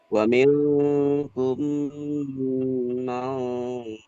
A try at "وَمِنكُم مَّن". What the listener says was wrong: Jangan diidghamkan, dimasukkan mai.